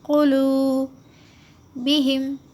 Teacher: قلوبہم، خاف کو جلد پڑھیں گے، خو کھینچیں گے نہیں، قو جلد ادا کرے اور واو کو تھوڑا سا کھینچے